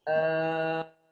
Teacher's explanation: jangan ditebalkan lamnya. Al-ana, lam tarkik ya, lam bukan tebal.